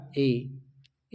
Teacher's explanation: ए जब बोलोगे तो कंठ से आवाज आएगी ए और तालु का भी इसमें प्रयोग होगा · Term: कंठ तालव्य